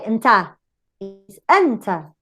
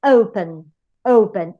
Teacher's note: The stress goes to the first syllable.